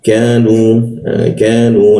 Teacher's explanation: Nah, setelah nu itu ada wawu dan kata berikutnya itu ada hamzah. Ketika wawu bertemu dengan hamzah maka muncul bendera, kita panjangkan 3 ketukan